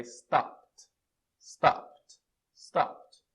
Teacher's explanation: Não tem vibração, então o passado é stopped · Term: sem vibração